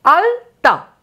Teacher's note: কি না জীবটা এসে সরাসরি দাঁতকে টাচ করল দাঁতকে স্পর্শ করল তাহলে এটা হলো দন্ত ল দাঁতের সাহায্যে যে ল কে আমি উচ্চারণ করলাম